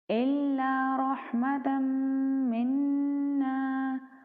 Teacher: مشدد میم ہے اور مشدد نون ہے تو ہم دونوں پہ غنہ کریں گے